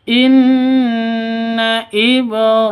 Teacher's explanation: nun tasydid berdiri sendiri, gunnah musyaddada dengung 2-3 ketukan